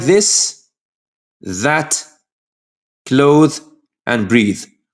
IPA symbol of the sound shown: ð